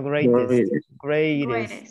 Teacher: The T sounds like a D.